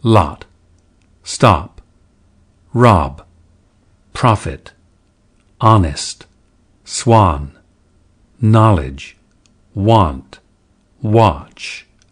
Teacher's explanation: the lot and thought lexical sets were pronounced without the lip rounding of today's RP